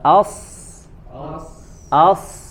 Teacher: ke depan monyong atau tidak ya Coba as as as ya tidak memonyongkan kedua bibir dan tetap menyempurnakan huruf a-nya dengan dengan istifalnya ya tidak dibaca dengan huruf ee dengan sifat tebal huruf a-nya